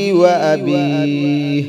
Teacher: با کو 1 الف کی مقدار کھینچ کر پڑھیں گے. یا ساکنہ سے پہلے زیر آ جائے تو یا مدہ 1 الف کی مقدار کھینچ کر پڑھتے ہیں اس کو.